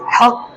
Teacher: काफ के ऊपर जज़म है तो काफ की आवाज़ पलटकर वापस आएगी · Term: कलकला